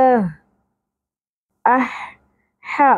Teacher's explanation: میں ہوتی ہے لیکن عربی میں یہ حا پڑھی جاتی ہے حلق کے درمیان میں سے حا کی ادائیگی ہوگی